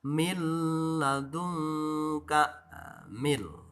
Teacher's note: Jadi tidak min tapi mil. Jadi huruf nunnya dimasukkan ke lam. Tidak memakai sengau karena tidak memakai gunnah. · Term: idgham bila gunah